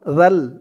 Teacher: জালের উচ্চারণটা কিন্তু একদম নরম পাতলা হবে। জিব্বার মাথা ওপরের দাঁতের মাথার সাথে লাগবে জালের উচ্চারণ করার সময়। জাল লাম দুই জবর, জাল।